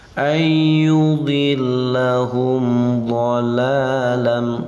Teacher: Idhar itu jelas, syafawi itu yang diucapkan dengan mim, dengan bibir, karena mim ini adalah makhraj syafawiyah. Ayyudillahum dhalalam, dhala patah berdiri panjang 2 harokat, panjang 2 harokat, namanya mad tabi'i atau mad asli. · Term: idhar syafawi